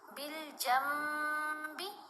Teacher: اقلاب کا جو اصول ہے نا اس کی پہچان یہ ہے کہ جب نون ساکن یا نون تنوین کے بعد حرف با آ جائے تو ہم نے نون کی آواز کو میم کی آواز میں بدل کر پڑھنا ہے